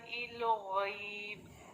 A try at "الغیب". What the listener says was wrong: لام ساکن کو کیوں ہلا رہی ہیں؟ الغیب کیوں پڑھ رہی ہیں؟